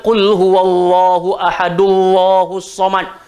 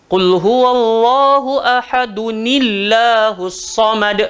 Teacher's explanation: Jadi bila tanwin bertemu dengan hamzatul wasal, kena tambah nun berbaris bawah